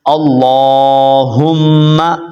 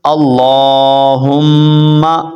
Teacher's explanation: کہ لام کے اوپر کھڑا زبر ہے، اور لام کے اوپر کھڑا زبر بھی ہے اور تشدید بھی ہے، تو اس کو آپ نے دبا کر بھی پڑھنا ہے اور لمبا کر کے بھی پڑھنا ہے